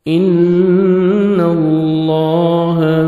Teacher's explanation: نون مشدد غنہ کریں گے، نوز میں ساؤنڈ لے کے جائیں گے۔ اللہ سبحانہ و تعالیٰ کے نام سے پہلے زبر ہے، لام کو اپنے پر بھی کرنا ہے، موٹا کرنا ہے اور 1 سیکنڈ کھینچیں گے، کھڑے زبر ہے۔